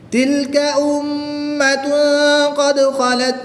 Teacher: میم مشدد میں غنہ کر کے پڑھیں گے. تنوین کے بعد قاف حروف اخفا میں سے ہے تو یہاں پر بھی غنہ کریں گے